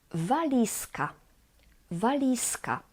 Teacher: afterwards two more valisa valisa here the z z becomes s z is voiced and it becomes its voiceless equivalent s because of voiceless C which follows the Z